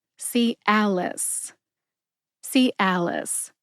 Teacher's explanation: Put it all together and you get Cialis. Emphasize al. See if you can hear that emphasis when I say it slowly.